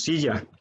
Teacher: suena más fuerte la primera sílaba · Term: sílaba tónica